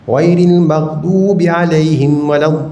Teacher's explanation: 6 harakat. Jadi mat lazim kalim muthaqqal jangan kurang 6, jangan lebih 6.